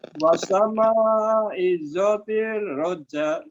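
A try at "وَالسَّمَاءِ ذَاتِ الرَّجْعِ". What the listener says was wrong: Di sininya coba kalau ada huruf yang bertasydid Pak ya, huruf bertasydid jadi ada penekanannya pada huruf tersebut. Wasama, wassa, wassama idzatir roja.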